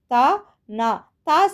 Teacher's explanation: நாவின் நுனி மேல்வாய் பல்லின் அடிப்பகுதியை தொடுவதால் நகரம் பிறக்கிறது · அந்த நாக்கோட நுனி அந்த மேல்வாய் பல்லோட அடிப்பகுதியை தொடுது. அதே மாதிரி தான் நாவும் தா நா அந்த அடிப்பகுதியை தொடுவதால் நகரம் பிறக்கிறது.